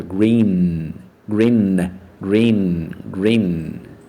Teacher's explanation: Lembrando, o N fecha lá no final. Termina o N pronunciando com a língua no céu da boca.